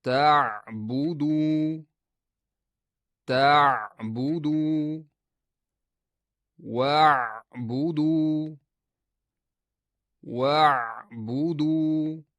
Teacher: Oʻpkadan chiqaydigan havo tovush paylarini turtib-turtib chiqadi va xqildoqni oʻzining orqasidagi xalqum devoriga egish yaʼniki yaqinlashtirish natijasida hosil boʻladi. Bundaq xildoq xalqum devoriga tegmaydi, balki ular orasida kichik bir tirqish, ochiq joy qoldiriladi. Aynan shu joydan havo siqilib chiqishi natijasida ayn tovushi yuzaga keladi. · Aynan shu joydan havo siqilib chiqishi natijasida ayn tovushi yuzaga keladi. A ain tovushi bir muddat ushlab talaffuz qilinadi.